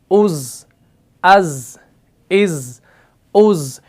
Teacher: starting میں ز کا ساؤنڈ آ رہا ہے نا، اسی کو کہا جاتا ہے صفیر